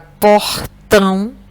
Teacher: na palavra portão, a última sílaba é a sílaba mais forte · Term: oxítona